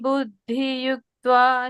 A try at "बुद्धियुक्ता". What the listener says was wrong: Not yuktva. Here yukta. You see, there is difference. Ik and ta. Here it is iktva. Ik, iktva. Yukta, yukta, mukta.